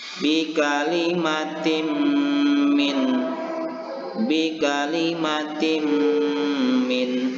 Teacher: Bagaimana cara membaca idgham bi gunnah ini? Yaitu memasukkan bunyi kasrotain ini kepada huruf sesudahnya yaitu huruf mim, dan membaca huruf mim ini seolah-olah bertasdid dan disertai dengan dengung